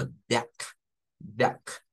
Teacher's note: Por eso vamos a pronunciarlo como duck, duck. Se escucha como una a, pero termina siendo una u.